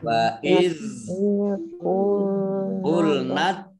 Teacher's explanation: waiz tidak dikol-kolahkan, ya, tidak dimantulkan.